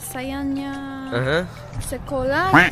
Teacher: kesalahan terjadi karena adanya penghilangan bunyi huruf H di akhir kata sekolah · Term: penghilangan fonem